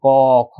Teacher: এই যে প্রথম যেগুলো আছে এগুলোকে বলা হয় কণ্ঠবর্ণ। কণ্ঠবর্ণ কেন বলা হয়? কারণ এগুলো কণ্ঠনালী থেকে উচ্চারিত হয়।